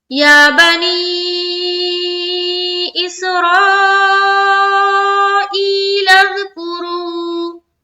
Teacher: یا میں کھینچا 1 الف کی مقدار، نی میں کھینچا 3 سے 4 الف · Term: مد